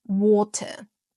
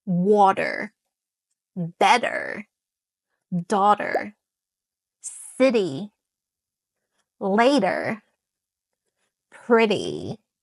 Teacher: It's more of a lazy t that doesn't want to be bothered with and transform into a duh, a light d sound. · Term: the disappearing T